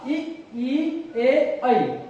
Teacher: जो जीवा के आगे वाले भाग से उच्चारित किए जाते हैं, उन्हें अग्रस्वर कहा जाता है